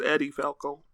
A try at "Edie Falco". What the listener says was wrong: I've heard it's pronounced Edie. I don't think Eddie is how you... Eddie's with two E's, or two D's, sorry.